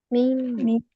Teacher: मीम का मखरज है, मीम की निकलने की जगह तो लिप्स है, होंठ है।